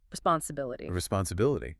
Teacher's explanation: Notice the I sounds are very short and soft.